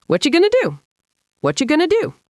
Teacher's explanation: What are becomes what you going to becomes going to. So the whole long sentence shrinks down into three quick beats.